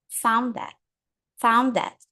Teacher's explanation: o som de D é um pouquinho mais enfraquecido e o som do that tá um pouco mais forte